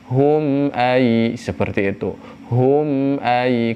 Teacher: Jika ada mim mati bertemu dengan huruf hijaiyah selain mim dan ba, maka itu adalah idhar syafawi. Gunnah yang ada pada mimnya normal, tidak ada tempo tambahan.